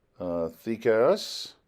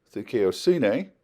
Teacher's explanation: When this is transliterated, our English D is used, but there's really not a D sound in modern Greek. It's more of a TH sound.